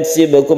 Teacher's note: sibkum ini qalqalah sughra karena di tengah kata, kemudian mim bertemu dengan ba kita sebut dengan ikhfa syafawi, kita panjangkan juga.